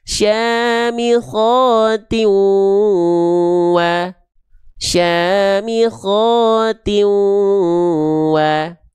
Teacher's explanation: Nah, itu yang pertama, itu yang disebut dengan idgham, meleburkan bunyi konsonan an pada tanwin atau nun sukun ke huruf berikutnya